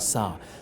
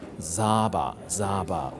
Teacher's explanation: the Burmese usually pronounce the verb to eat with the S sound, sa. The woman pronounced Zaba, Zaba with the Z sound.